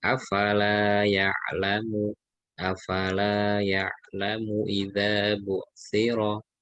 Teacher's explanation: lanya panjang, mimnya yang pendek